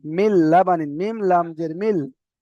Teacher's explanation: এখানে নুনটার উচ্চারণ হচ্ছে না গুন্নাও হচ্ছে না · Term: বিনা গুন্নায়